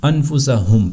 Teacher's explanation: آرام سے آپ نے میم ساکن کی آواز کو اظہار کر کے پڑھنا ہے، بس اس کو لمبا نہیں کرنا، بس اتنا آپ نے اس کو ادا کرنا ہے کہ پتہ چل جائے کہ یہاں پر میم ہے۔ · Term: اظہار شفوی